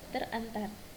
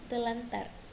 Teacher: bunyi r dan r pada kata terantar diubah menjadi Bunyi l dan R sehingga menjadi telantar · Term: disimilasi